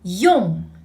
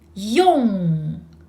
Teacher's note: like you say the English word yes, but shape your lips into this ong.